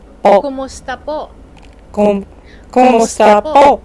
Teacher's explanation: Remember to use the glottal stop at the end of po